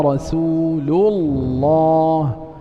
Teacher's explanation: وهكذا رسول الله تفخم أيضا لأن لام لفظ الجلالة سبقت بضم. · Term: التفخيم